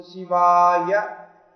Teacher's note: And Shivaya, the Va should be lengthened